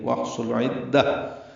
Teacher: واحصل صاد پر ہے، لام باریک ہے، عین وسط حلق سے ادا ہوگا، دال سے ملانا ہے، دال کو تاء مربوطہ سے ملا دیں گے، وقفاً یہ ہا میں تبدیل ہو جائے گی. واحصل عدہ وقف بالابدال ہوگا.